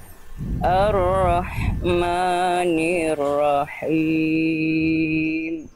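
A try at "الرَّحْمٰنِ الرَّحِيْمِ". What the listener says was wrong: tipiskan vokal a vokal a a-nya semuanya sudah bagus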